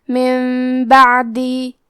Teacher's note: کلمت من کے آخری میں نون ساکن ہے، پھر حرف البا ہے کلمت بعدی، یہاں بھی حکم ہے قلب تو ہم یہ حکم کو غنہ کے ساتھ ادا کریں گے